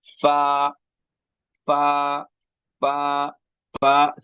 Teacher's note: والا حصہ، بہت آسان اردو میں، نیچے کے ہونٹ کی تری، نیچے کے ہونٹ کی تری ثنایا علیا کے کنارے کو لگنے سے ادا ہوتا ہے